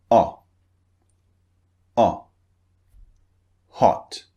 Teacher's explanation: So it starts relaxed like just like this and then it turns into a rounded shape like o so so okay the second vowel the short one o the shape of the mouth is slightly rounded not very rounded but slightly rounded.